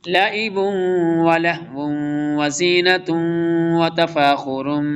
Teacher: لعب دیکھیں ادغام یرملون آ رہا، تنوین کے بعد واو آ رہا ہے، پھر آگے بھی واو آ رہا ہے، اور پھر آگے بھی تین یہاں ادغام یرملون اکٹھے ہو رہے ہیں۔